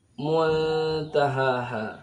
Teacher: Ini ikhfa juga, sama dengan antah tadi. Di ha, antara ha yang pertama dengan ha yang kedua sama-sama dibaca satu alif, dua harakat